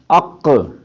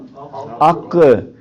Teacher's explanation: قاف کا مخرج ہے بالکل گلے کے ساتھ ہی نرم تالو، تو وہاں سے یہ قاف پر پڑا جاتا ہے دوسرے کاف کے مقابلے میں۔ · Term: قلقلہ